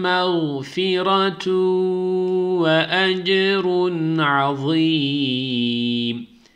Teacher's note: Şuradaki iki ötreden sonra vav geldiği için idgam malgunne oldu. Buradaki tenvinin içindeki nun harfini vava çeviriyoruz. Ve yine aynı şekilde ses genizden gelerek bir elif miktar tutuyoruz.